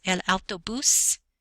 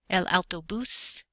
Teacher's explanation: Notice the stress is on the last syllable. There's an accent mark over u El autobús.